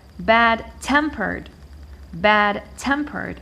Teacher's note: I stress the second part tempered